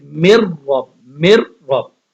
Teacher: اب یہاں پہ تو ہم نے غنہ نہیں کرنا کیونکہ آگے را آ گیا